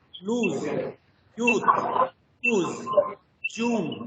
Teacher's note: the back of the tongue is raised to very near to the closed position. Tips are closely rounded, tongue is tense in this case.